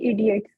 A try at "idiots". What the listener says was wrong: बेटे इडियट नहीं है, इडियट्स है, एस भी लगाओ। इडियट्स, एस नहीं है उसमें एंड में, 3 तो आपने तो सोचा हुआ एस नहीं लगाने हैं, एस पता नहीं कहाँ आपने बचा के रखनी है लॉकर में।